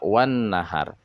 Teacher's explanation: takrif syamsiah atau disebut dengan alif lam sysiah dikata Wan nahar Alif lamnya sudah tidak dibaca lagi idgham lam tarif Syamsiyah